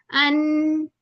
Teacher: ये ऊपर वाले जो गम्स है ना हमारी गम्स जहां से स्टार्ट हो रहा है वहां पे जाके जो है चिपक जाती है जुबान